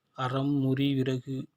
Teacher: ர வரிசையில் அறம், முறி, விறகு இவற்றை உச்சரிக்கும் போது நுனிநாக்கு நுனி அன்னத்தை பொருத்தி அதிர்வதால் இதனை ஆடொலி என்பர்.